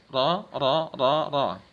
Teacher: Inhiraf ini huruf ra ini cenderung ke makhraj huruf lam, ya. Seperti cedal.